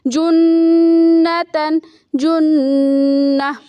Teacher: تو امتن، یہاں پہ میم میں آواز کو تھوڑا سا ہم ٹھہرائیں گے، امتن امہ، جیسے کہ یہاں پہ نون مشدد ہے تو اس میں بھی آواز کو ٹھہرائیں گے، غنہ کریں گے، جنتن جنہ۔ تو حروف پڑھتے ہوئے، الفاظ پڑھتے ہوئے ان تمام اصول کا خیال رکھ کر ہم پڑھیں گے اور تلفظ کریں گے۔